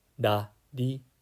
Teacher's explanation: [Music] Japanese we romanize these characters using the consonant R but the actual sound is somewhere in between an l and an R you lightly tap the roof of your mouth with the tip of your tongue · you can also think of it as like a soft t or d sound as in butter or muddy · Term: r sound